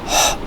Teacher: We have h sound, which is again a fricative, but it is a glottal sound.